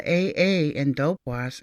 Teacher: the AAA in dope WAAS is strongly nasal rather than just saying ah we say ah so it's dope